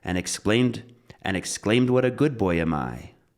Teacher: So exclaimed is going to be stressed.